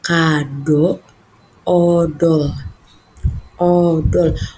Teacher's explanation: Pengucapan huruf O ini yaitu bibir membulat sempurna.